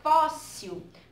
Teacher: a sílaba pronunciada com mais força na palavra fóssil foi o fó, não é? A sílaba tônica, no caso, ela é a primeira.